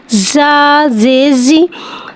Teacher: ज़ा को एक अलिफ यानी 2 हरकत के बराबर खींच के पढ़ेंगे। ज़ा को सीटी के साथ ज़ाहिर करके पढ़ेंगे। ज़ा के नीचे ज़ेर है, ज़ेर को नीचे गिराते हुए अदा करके पढ़ेंगे।